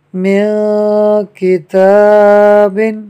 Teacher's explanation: نون ساکن کے بعد کاف حروف اخفاء میں سے ہے، لہٰذا اخفاء کا قاعدہ ہوگا، یعنی نون ساکن میں غنہ ہوگا۔